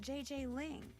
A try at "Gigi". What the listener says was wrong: You mean Gigi Ling? Gigi. En français, you pronounce G like J and J like G. She may very well be JJ in America, but in France, she is Gigi.